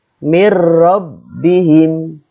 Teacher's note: dengan salah satu huruf yang dua yaitu lam atau row ya cara membacanya meleburkan nun sukun ke huruf berikutnya tanpa guna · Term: idgham bilagunnah